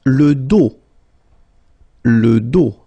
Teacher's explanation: Final S not pronounced.